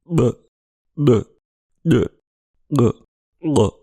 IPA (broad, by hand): ɓ ɗ ʄ ɠ ʛ